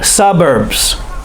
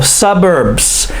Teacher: The emphasis is on the first syllable, suburbs. Don't forget the S.